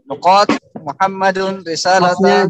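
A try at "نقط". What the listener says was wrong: Jangan dipanjangkan. Nuqat pendek.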